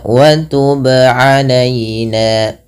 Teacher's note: Yang benar adalah dia memantulkannya tanpa berhenti, tanpa menambahkan hamzah. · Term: qalqalah